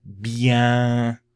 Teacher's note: And bien has a nasal vowel with it.